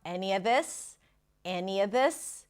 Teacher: This is the proper phrase, but the of is reduced to awah. He connects the any with awah.